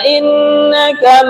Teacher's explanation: di sini yang kita dengungkan innaka nun tasdid